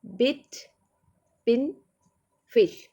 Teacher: this vowel is in the closed front area compared with cardinal vowel number one e it is more open